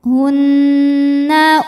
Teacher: karena Nun bertasdid cara bacanya dengung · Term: gunah musyaddadah